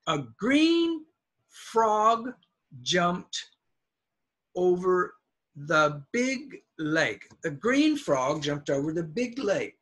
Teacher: the adjectives are the loudest